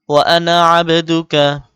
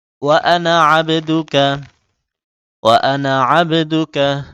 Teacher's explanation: ওয়া আনা এখানে নাতে টান হবে না, জবর পরে যদিও খালি আলিফ, তারপরও আনা টানা নিষেধ আছে, তাজবিদের নিয়মে আছে ৪ আনা টানা মানা, এখানে এই আনাটা টানা যাবে না।